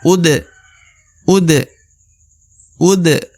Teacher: harakat u huruf a harakat u dibaca u di depannya terdapat da berharakat sukun maka da ini harus dibaca pantul ya karena termasuk huruf huruf pantul atau huruf Qalqalah UD UD